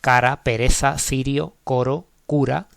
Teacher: La R suave, vamos a decir, en posición intervocálica y después de consonantes como B, C, D, F, G, K, T.